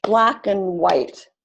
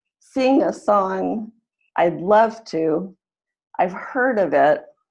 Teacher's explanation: those are all examples of the unstressed word in that sentence changing to an a sound